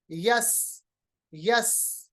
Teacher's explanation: आवाज तेज अदा हो रही है, सीटी की तरह अदा हो रही है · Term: सिफत सफीर